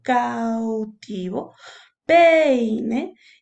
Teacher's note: Ahora, en el diptongo decreciente ocurre a la inversa. Empiezas con una vocal abierta, que es fuerte, y luego viene una vocal cerrada, que es mucho más débil.